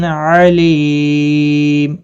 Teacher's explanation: مد العارض وقفی ہوگا، 3 سے 5 الف کے برابر کھینچ کر وقف کریں گے · تنوین کے بعد حروف حلقی کا عین ہے، اظہار حلقی ہوگا، گنہ کے نہیں کریں گے